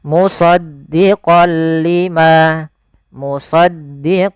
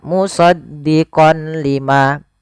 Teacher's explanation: memasukkan apa suara nunnya kepada huruf lam tapi tidak boleh disertai dengan gunah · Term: idgham